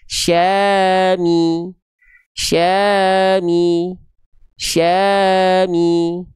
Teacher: Setiap ada huruf apapun tanpa adanya pengecualian sedikit pun kalau dia harakatnya kasrah dia vokalnya vokal i. Maka tengah lidah kita diangkat ketika melafalkan vokal i-nya